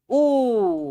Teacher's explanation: ऊ बोलने में ज्यादा टाइम लग रहा है, दीर्घ स्वर है।